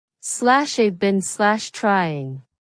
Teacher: In fast, natural English, I have becomes I've. Been is pronounced bin, sounds like bin.